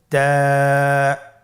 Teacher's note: তা হরফটি বারিক হরফ এবং এক আলিফ টেনে পড়তে হবে · জিহ্বার আগা সামনের উপরের দুই দাঁতের গোড়ার সঙ্গে লাগিয়ে উচ্চারিত হয়